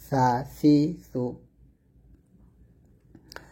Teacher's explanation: সাটা পাতলা হবে, জিহ্বার আগা সামনের উপরের দুই দাঁতের আগার সঙ্গে লাগিয়ে সা পাতলা উচ্চারণ করবেন